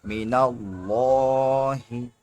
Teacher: زیر می، نون لام زبر نل، مینل لام کھڑا زبر لا، من اللہ لفظ اللہ سے پہلے زبر ہے اس لیے موٹا ہوگا ، ہا زیر ہی، من اللہ اس طرح سے پڑھیں گے،